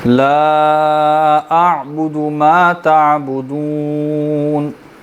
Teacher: آئین کو ظاہر کریں گے، جھٹکا پیدا نہیں ہوگا لیکن آئین مکمل طور پہ ظاہر کریں گے. لیکن اگر اس میں مشکل ہو رہی ہو تو صرف اس کو جھٹکے سے بچا کر سمودھ پڑھ لیں تاکہ یہ حمزہ نہ بنے.